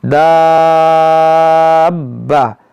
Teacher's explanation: با جو ہے مشدد ہے، تو اس کو جو ہے با کو 2 بار پڑھنا ہے